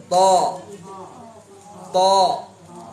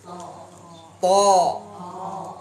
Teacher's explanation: Huruf to dari sini to. Ini ujung lidah bertemu dengan pangkal gigi seri atas.